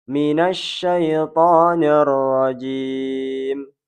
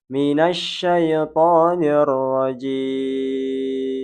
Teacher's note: mad arid lis sukun, yaitu boleh dibaca 2, 4, atau 6 harokat. Namun yang sering digunakan para jumhur ulama adalah sebanyak 6 harokat.